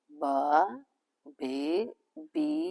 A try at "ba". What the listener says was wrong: Not the bar, be. but you're saying ba. So the sound, So ba, ba, be,